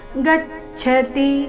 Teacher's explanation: ಗಚ್ಚತಿ ಗ ಮೇಲೆ ಆಘಾತ ಗಚ್ಚತಿ ಕೊನೆಯತಿ ರಸ್ವ ಬರಬೇಕು ಪೂರ್ತಿ ಶ್ಲೋಕ ಸನ್ಯಾಸು ಮಹಾಬಾಹೋ ದುಃಖಮಾಪ್ತುಮ ಯೋಗತಃ ಯೋಗಯುಕ್ತೋ